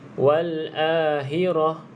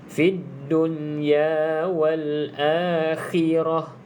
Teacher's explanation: jelaskan makhraj huruf kha ini. Kalau tak, dia akan bunyi seolah-olah huruf ha.